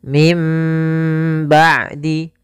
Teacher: Iklab yaitu membalikkan suara nun menjadi suara mim.